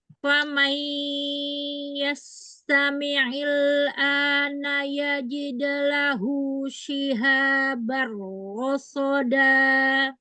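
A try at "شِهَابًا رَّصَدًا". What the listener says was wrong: Pangkal lidah tegangkan lagi, angkat lagi. Naikin ke atas. Karena karena sod punya itbak kan sifatnya. Selain isti'la dia punya sifat itbak. Itbak itu terkepung. Jadi di dalam mulut tuh terkepung suaranya. Rasada.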